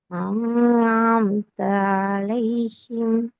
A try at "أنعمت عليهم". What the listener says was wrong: ஐந்தான் நல்லா முதலாவது வர அலிஃப சவுண்ட் மட்டும் ஏர்ட சவுண்ட்ல இருந்து ஸ்டார்ட் பண்ணுங்க. இன்னும் தேர்ட் சவுண்ட் தெளிவாக வரணும்.